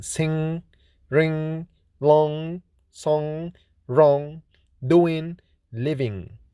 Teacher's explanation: is voiced velar nasal consonant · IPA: /ŋ/